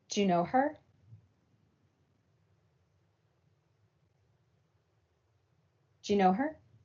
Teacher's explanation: the word do in connected speech often gets reduced to just a d sound. So in connected speech, do you ends up just sounding like Jew. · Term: coalescence